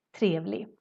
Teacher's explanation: we kind of skip the G in the end, even if we write it.